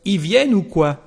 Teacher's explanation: And it is the same that the singular form, when we speak, il becomes I everywhere